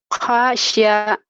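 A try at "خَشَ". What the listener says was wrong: Kho. Khosya. Kho. Kho. Kho. Bukan H. Khosya. Ada titiknya.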